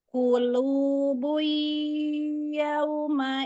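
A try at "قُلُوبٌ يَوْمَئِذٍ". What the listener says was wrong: belum masuk ke hidung tapi coba lagi ya. Tekan ke hidungnya.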